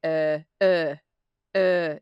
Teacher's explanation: But for me, uh, when I was learning the Scottish accent, it was uh that it is a very very backed position. So, um, we don't have a lot of nasality. There's not a lot of that nasal sound coming through. And it sits really low. And so if you follow your jawline with your finger and find the point at the back where where it's like a triangle um the pointy bit it's in there it's in it's in that space.